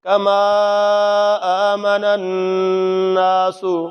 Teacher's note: نون کو نون کے ساتھ جب ملائیں گے تو تھوڑی سی دیر لگائیں گے، غنہ کریں گے